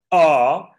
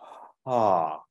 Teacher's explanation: one is a hard or forced onset one is a breathy or aspirate onset